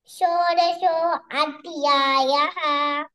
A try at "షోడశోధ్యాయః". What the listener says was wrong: షోడశోధ్యాయః. Break చేయకుండా full గా చెప్పు. షోడశోధ్యాయః. షోడశోధ్యాయః. షోడశ అధ్యాయః అనొచ్చు. ఓ అన్నప్పుడు కలిపే చెప్పాలి. ఓకే, బ్రేక్ చేయొద్దు అక్కడ.